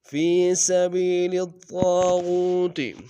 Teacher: لام کو طاغوت کے طاء کے سامنے لانا ہے، شد ہے زور دیں گے، الف مدہ طاء کے ساتھ ایک انداز میں کھینچیں گے، طاء کو موٹا ادا کریں گے، غین کو واو کے سامنے لیں گے، واو مدہ ایک انداز میں کھینچیں گے۔